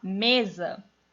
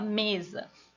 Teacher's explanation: o me é mais forte que o za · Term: sílaba tônica